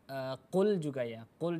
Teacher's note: huruf q ini adalah merupakan huruf istila dan keadaannya berada dalam keadaan fathah berarti huruf q harus dibaca dengan ketebalan yang full